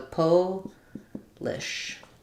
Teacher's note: With the po being longer and stressed and the lish being shorter.